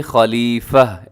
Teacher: وقف کریں گے تو تا کو ہا سے بدل کے خلیفہ ایسے ہو جائے گا